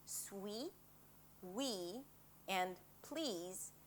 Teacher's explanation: the EE for the tense, 'e' as in 'sweet', 'we' and 'please'